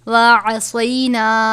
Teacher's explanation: عین کو باریک پڑھنا ہے، صاد کو پر پڑھنا ہے